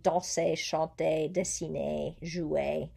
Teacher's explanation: verbs like infinitives er verbs you don't hear that r at the end of the word